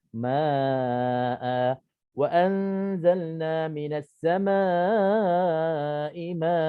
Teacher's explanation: Bila kita berhenti, nun ini kita ibdal, kita iwad, kita gantikan nun yang ada pada tanwin ini kita gantikan dengan huruf mad alif, alif maddiyah. Jadinya ma'a wa anzalna minas samaa'i ma'a.